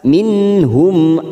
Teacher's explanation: nun sukun bertemu ha Idhar hal kita baca jelas